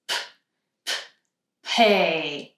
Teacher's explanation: The sound is a little bit more aspirated than in Spanish. So that means that you're going to close your lips tight and have a big puff of air when you release.